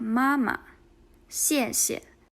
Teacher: The second syllable should be in neutral tone.